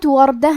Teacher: حرف الراء کا حکم ہے تفخیم، تو ہمیں راء کو موٹی آواز میں پڑھنا ہے۔ آخری میں تائے مدورہ پہ تنوین زبر ہے۔